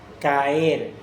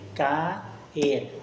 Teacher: La A y la E se separan en sílabas distintas